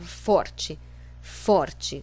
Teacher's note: qual é a sílaba tônica for porque é nela que recai é a força